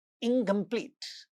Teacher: in the negative prefix, the nasal also becomes velar